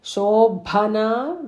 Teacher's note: Shobhana, that Bha is also Mahaprana.